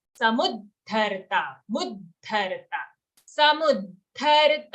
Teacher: Not samudartha. Mu is a short sound plus it has an aghat.